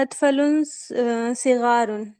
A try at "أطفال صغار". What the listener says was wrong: ठीक है, थोड़ा सा खींचिए, अतफाल सिगार, ये ज्यादा सही होगा।